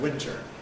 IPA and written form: ˈwɪntɚ (winter)